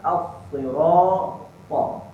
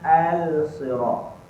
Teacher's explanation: Nah, lam itu tidak dibunyikan. To be silent. Masukkan terus kepada huruf sad. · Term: idgham samsi